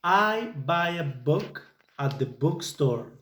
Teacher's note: the place of articulation where the sound is made is at the front of the mouth and in this case by using both lips